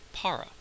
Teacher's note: par with a aspirated P that's what that small H indicates and a very English sounding R